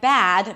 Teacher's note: So, the tendency is to open the mouth a little less and the result. Is that the 'a' sound becomes 'e'